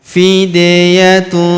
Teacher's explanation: Huruf da berharokat sukun kita pantulkan atau kita qalqalahkan. Fidyatun.